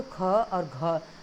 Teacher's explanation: क से ज़्यादा समय लग रहा है और ज़्यादा ऊर्जा भी लग रही है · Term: महाप्राण